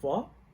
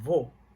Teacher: And it might be weird for someone that are learning Portuguese, and because we have the word of vó, we have the word vó and vô, and if you're not used to hear the different vowels, you might think that it's the same, but vó and vô is different. Vó is open, vô is closed.